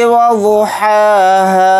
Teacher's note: वात को जल्दी पढ़ेंगे और वात को यहाँ पर मोटा यानी पुर पढ़ेंगे। हा के ऊपर खड़ा ज़बर है, हा को थोड़ा खींच कर पढ़ेंगे 1 अलिफ की मकदार।